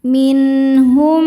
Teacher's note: min hukumnya adalah idhar halqi karena nun sukun bertemu huruf halqi atau tenggorokan yaitu ha. Cara bacanya nun sukun dibaca jelas.